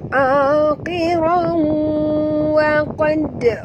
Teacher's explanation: tanwin bertemu dengan waw, masuk dan dengung, ya. Masuk 100% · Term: idgham ma'al gunnah